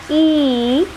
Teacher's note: is the position of the lips by producing the sound e what is the position of the lips is it rounded no it is spread so it is ungrounded so the first criteria is e is